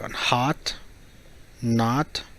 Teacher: when the O is pronounced as an aah your mouth opens vertically and the sound you produce is long